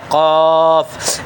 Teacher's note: زبان کی جڑ اور تالو کا نرم حصہ یہ قاف کا مخرج ہے